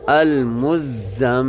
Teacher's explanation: پر ہمیشہ جو ہے نا کیا ہوتا ہے، غنہ ہوتا ہے، یعنی میم کی آواز کو ناک میں مکمل چھپائیں گے 1 سیکنڈ کے برابر ، المزملو، اور زا کو بھی سخت آواز کے ساتھ پڑھیں